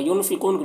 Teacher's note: नून के आवाज़ को नाक में छुपा कर पढ़ेंगे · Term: इख्फ़ा